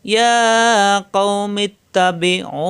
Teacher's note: পেশের বামে অ সাকিন একালিপ টান হয়ে যাবে, এটাকে এই যে একালিপ টানলাম এটাকে বলা হয় মাদে ফাসলি। এখানে মনে মনে সাকিন ধরে একালিপ টানলাম, একে বলা হয় মাদে ফাসলি।